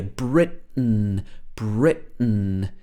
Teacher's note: she says she's from britain britain so she uses this glottal stop here